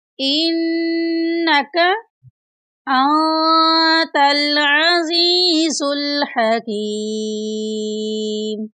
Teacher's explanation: اس میں نون ساکن ہے، نون ساکن پر اخفا کریں گے · یہاں پر نون مشدد ہے، نون مشدد پر غنہ کریں گے